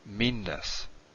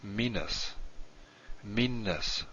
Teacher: say this meanness is different than meanness you hold this longer you don't say it twice but you hold it longer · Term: double n